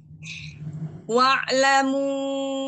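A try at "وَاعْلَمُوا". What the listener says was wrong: Ah, jangan dihentak. Kok ngikutin Umi Nurul? Wa'lamu.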